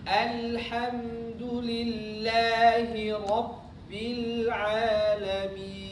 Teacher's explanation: Begitu mau menginjakkan atau menempelkan dua bibir, itu pasti ngalir ke hidung. Tapi begitu sudah dilepas, mi itu nggak boleh ngalir ke hidung lagi. Jadi ketika baca alhamdulillahi rabbil alamin, min bukan min ngalir ke hidung.